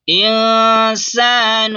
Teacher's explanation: नून साकिन के बाद हुरूफ इख्फा में से सीन है, इसलिए नून की आवाज को नाक में छुपाएंगे